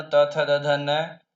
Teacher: ये दंत्य वर्ण कहलाते हैं क्योंकि इनके उच्चारण में जिह्वा ऊपर के जो दांत है उनको स्पर्श करती है